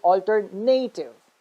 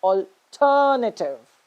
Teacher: but the third syllable is not the one that is stressed the second syllable is the one that is stressed